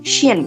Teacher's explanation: Kemudian jika shin, nah itu kan sedikit dihentakkan dan juga agak berbunyinya ke bagian belakang, shin gitu kan.